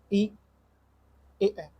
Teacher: जिन स्वरों के उच्चारण में जी्हा का अग्र भाग सक्रिय रहता है उसे अग्र स्वर कहते हैं।